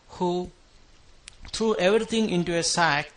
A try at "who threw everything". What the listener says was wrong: Not quite on this TH sound, who threw. Almost sounded like you said who to. But who threw everything.